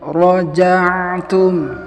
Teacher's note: raja'tum, ainnya tunaikan tawasudnya dan sambung ke huruf ta. Tidak boleh kita putus seperti ini.